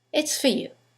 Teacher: preposition for. In the sentence, the vowel is reduced to f. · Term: weak forms